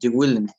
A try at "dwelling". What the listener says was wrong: actually is we don't pronounce the it's dwelling dwelling it's dwelling